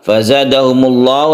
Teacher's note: lafaz Allah yang dibaca tebal karena sebelumnya ada dhamma